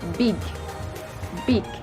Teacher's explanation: tergolong dalam velar, plosive, dan juga voice sound.